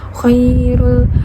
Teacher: Khiratu khairul rul itu adalah khoy itu matobi'i ya karena di situ ada kho berharokat fathah bertemu dengan ya sukun dibaca panjang 2 harokat